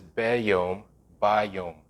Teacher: it changes the vowel to ah, from eh to ah · the hey disappears completely. There's no H sound